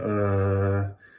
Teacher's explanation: your tongue is right in the middle of your mouth you don't have to round your lips or anything you just put your tongue right in the middle and relax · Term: cup of mustard